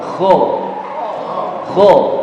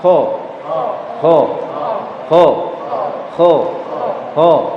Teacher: Huruf kha ya, ketika dibaca ya, itu ada sifat isti'lanya, artinya dia menebal.